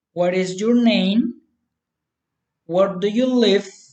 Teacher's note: Friendly interest, politeness, rising intonation.